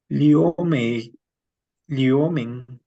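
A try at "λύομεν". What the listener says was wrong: si pero está sobre la Y, es que liomen, liomen. Si el acento está sobre la Y, liomen, liomen.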